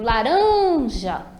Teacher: quando eu estou chamando a palavra, eu percebo que eu demoro mais no rã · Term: sílaba tônica